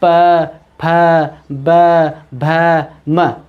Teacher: ओष्ठीय वर्ण वे सभी वर्ण होते हैं जिनका उच्चारण करने पर हमारे जो होठ है दोस्तों वे आपस में मिलते हैं।